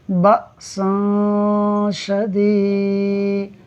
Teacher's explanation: یہاں اخفا کا قاعدہ ہوگا، یعنی ہم غنہ کرتے ہوئے پڑھیں گے